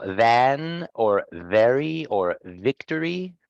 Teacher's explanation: the vocal cords vibrated during its production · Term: voiced